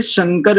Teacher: तालव्य शकार क्योंकि तालु की सहायता से बोला जाता है।